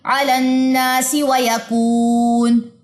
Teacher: اب یہاں پہ ویکون پہ اگر میں نے وقف کرنا ہے تو میں نون کی زبر کو ڈراپ کر دوں گی